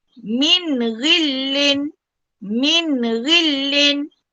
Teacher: Nun mati bertemu dengan huruf ghin. Mesti dibaca dengan terang dan jelas. Okey, tanpa dengung. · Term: izhar halki